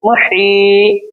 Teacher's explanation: इसको क्यों खींचेंगे, क्योंकि यहाँ पे या मद्दा है, या के ऊपर जज़म है इसलिए, और या के ऊपर जज़म है और या से पहले जेर है तो ये या मद्दा है तो इसको हम एक अलिफ के बराबर खींचेंगे